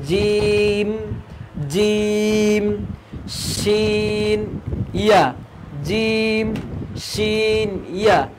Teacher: জিহবার মধ্যভাগ তার বরাবর উপরে তালুর সঙ্গে লাগাইয়া উচ্চারিত হয় জিম